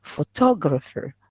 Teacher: Okay, here four syllables, and the stress is on the second one. To, that is, you emphasize it.